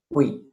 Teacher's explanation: No 2 golpes de voz, sino 1. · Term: diptongo